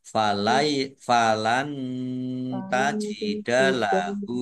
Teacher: Nun sukun bertemu dengan huruf ta, bacaan ikhfa dibaca samar-samar.